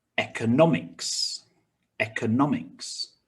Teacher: 4 syllables with stress on the third syllable